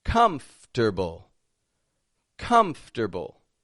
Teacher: spelled as a four syllable word but we only pronounce three of them and we rearrange some of the letters comfortable comfortable not that